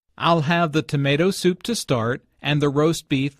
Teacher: The stress falls on the second word in each phrase.